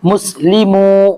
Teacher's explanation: ہم یہاں پہ میم کو نہیں کھینچ رہے ہیں نہ ہی لام کو کھینچ رہے ہیں، لیکن میم کے ساتھ جو واو ہے اس کو کھینچ رہے ہیں، کیوں کہ یہ واو جو یہ حروف مدہ میں سے ہے.